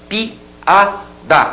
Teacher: quando você pega duas vogais coloca uma ao lado da outra mas cada uma pronunciada em uma sílaba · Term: iato